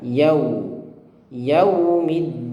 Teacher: Ingat ketika membaca yau itu dimonyongkan.